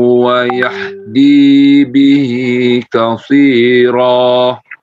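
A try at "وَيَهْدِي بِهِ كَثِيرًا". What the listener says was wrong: Wayah, ha-nya besar. Ha besar, coba diulang lagi. Bukan yahdi tapi yah. Beda ya suaranya.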